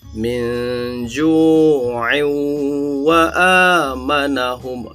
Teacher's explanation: Tanwin bertemu sama huruf waw. Hukum bacaan di sini adalah idgham biunnah. Dibaca dengung dan panjang selama 2 harakat.